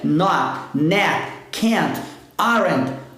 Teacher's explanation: quando for no final da palavra, a gente não pronuncia esse T, a gente segura ele lá em cima, na verdade a gente só não solta